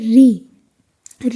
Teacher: और सनवर्त का मतलब होता है इसके अंतर्गत जब री बोलोगे ना तो सनवर्त नहीं होता यानी मुख आपका आधा खुला हुआ नहीं होता मोस्टली क्या होता है बंद होता है ठीक है और ये वृत्त मुखी भी नहीं होता क्योंकि ऋ में होठ जो है गोल नहीं होते · जब भी आप ऋ बोलोगे ना तो ये अग्र नहीं है। यह मध्य से होता है।